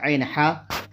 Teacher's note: شروع حلق سے حمزہ ہا، درمیان حلق سے عین حا، اور اخیر حلق سے غین خا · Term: حروف حلقی